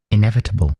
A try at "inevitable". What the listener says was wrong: Yeah, I think you have it. That's spot on.